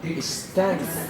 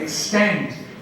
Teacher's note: the stress comes on the second syllable